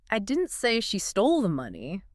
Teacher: By stressing say, you're not denying you communicated the idea. You're denying the method of communication. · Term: stress the verb